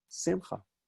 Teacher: as a personal name, you'll often hear it pronounced on the penultimate syllable, the next to last syllable.